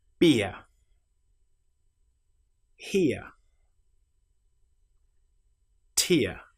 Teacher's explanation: we start with the shape I and we end with our very common sound uh